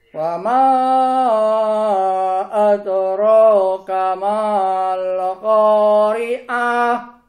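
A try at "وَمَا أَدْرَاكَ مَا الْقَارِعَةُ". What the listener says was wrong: Oke, masya Allah. Nah tinggal dikonsistenkan ya Pak.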